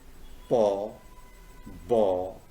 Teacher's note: Now you see paw and baw. These two are bilabial sounds.